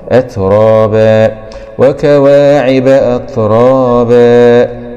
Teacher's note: أت راء فتحة مع التفخيم ألف سكون مض طبيعي أت راء باء فتحتين مع الإدغام بغنة في الواو المفتوحة